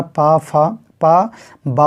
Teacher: दोनों ओठ, ऊपर का और नीचे का जो ओठ होता है उनकी सहायता से उच्चारित होने के कारण ये पा वर्ग में या पा वर्ग के वर्ण जो हैं ओष्ठ कहलाते हैं